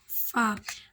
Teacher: स्नाया उलिया के किनारे और जो नीचे वाला होंठ है उसके मिलने से अदा होता है। नीचे वाले होंठ के अंदरूनी यानी कि जो अंदर है, बाहर नहीं, अंदरूनी।